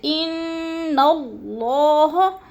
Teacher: ان کی نون مشدد ہے، سختی سے جماؤں کے پاس ساتھ پڑھیں گے، جیسے ان اللہ، اور اللہ پر پڑھا جائے گا، اللہ سے پہلے لفظ نون کے اوپر زبر ہے تو اللہ کو پر کر کے پڑھیں گے،